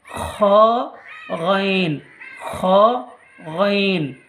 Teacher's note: গলার শেষ অংশ হইতে উচ্চারিত হয় বা কণ্ঠনালীর শেষ অংশ হইতে উচ্চারিত হয়